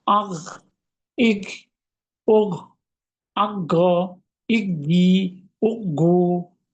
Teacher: এরপরে সাকিন, আগ, যখন সাকিন দিবে একবার আটকে যাবেন, একটু সামনে স্লিপ কাটার মতো হবে, যেহেতু আংশিক খরখরা।